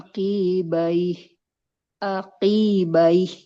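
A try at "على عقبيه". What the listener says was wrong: Nah, qafnya nggak boleh panjang. Nggak boleh aqibah.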